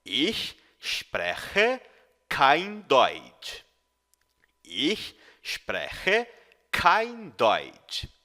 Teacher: as letras CH no alemão têm o som de um chiado, como na palavra cachorro, porém pronunciado mais no fundo da garganta